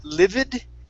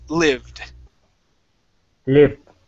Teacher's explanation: we skip right over that E sound, and it goes right to the D